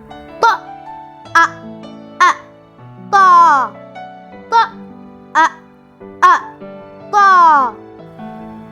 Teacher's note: The tip of the tongue will press the roots of upper front teeth, and then the back of the tongue will be raised but not touching to the roof of the mouth, producing ta sound with full mouth, making echo inside the mouth